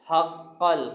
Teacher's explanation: قاف پر شد ہے، سختی کے ساتھ پڑھیں گے